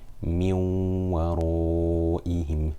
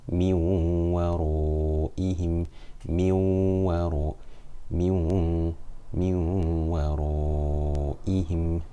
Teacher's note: We have a noon sakina here, and it is followed by a waw, which is one of the 6 yarmalun letters, and more specifically it is one of the 4 yanmu letters. So we must merge the noon completely into the waw and read it as one single letter with ghunna for 2 harakat